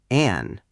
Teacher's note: The N ending, tongue tip, touches just behind your top teeth, like the end of pan.